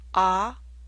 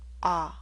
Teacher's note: The ah in father makes you open your mouth more.